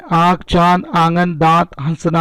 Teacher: अनुनासिक में हवा मुंह और नाक दोनों से निकलती है।